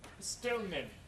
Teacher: Alveolar N changes to bilabial M due to following bilabial M. So again, this is leading assimilation of place.